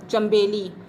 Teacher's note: اچھا بچوں، اب یہاں دیکھیں کہ یہاں چے نون زبر چن بن رہا ہے، لیکن یہاں ہم نون کی آواز کو میم میں بدل کر پڑھیں گے